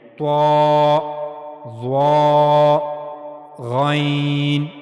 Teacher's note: جب ان کو پڑھا جائے گا تو آواز موٹی کی جائے گی